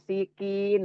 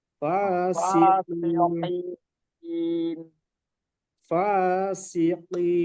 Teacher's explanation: Ya, qaf. Jadi qaf itu paling dalam.